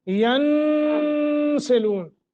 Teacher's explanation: نون ساکن ہے، آگے سین ہے، لہذا اخفا میں سے ہے سین، تو یہاں بھی لمبا کریں گے